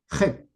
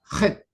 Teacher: letra gutural porque su sonido proviene desde la garganta, pero como raspando. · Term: consonante gutural áspera